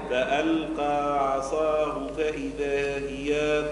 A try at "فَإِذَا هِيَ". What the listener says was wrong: لا هي من جبت لنا المد هي فإذا هي نعم